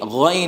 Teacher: دیکھیے جو اوپر کا حصہ اس کا نام بتایا تھا ادنائے حلق، اس سے غین اور خا ادا ہوتے ہیں، غین اور خا اوپر کے حصے سے، غین اور خا یہ اوپر کے حصے سے ادا ہوں گے، اور دونوں کو موٹا پڑھیں گے، پتلا نہیں پڑھیں گے۔ اگر آپ نے غین نہیں پڑھا، گائن پڑھا تو یہ اردو کا گاف بن جائے گا۔